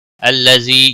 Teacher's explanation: الذي یا مدہ ہے ایک الف کے برابر کھینچ کر پڑھیں گے.